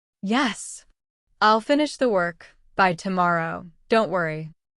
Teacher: You silently note the pauses, the stress on key words, finish, tomorrow, worry.